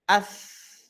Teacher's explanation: maka ketika dia hidup atau mati huruf tsa ini ya ditekan atau tidak tetap ada aliran suaranya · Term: rakhawah